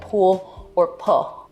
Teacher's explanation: an L turning into a vowel in a word like pool or pull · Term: L vocalization